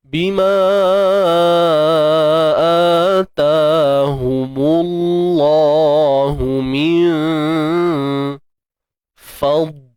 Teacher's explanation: Dad yang sukun ni kita kena tebalkan. Tapi jangan lantun, tuan-tuan puan. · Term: huruf dad